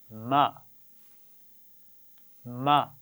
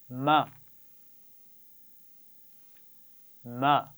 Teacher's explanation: تو یہ حرف میم کا مخرج ہے، ہونٹوں کے باہر والا حصہ، ان کو آپس میں ملا کر کھولتے ہیں تو میم کی آواز ادا ہوتی ہے